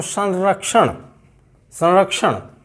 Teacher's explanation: मूर्धा से उच्चरित होने वाला पंचम वर्ण है ण, ण, ये है ण।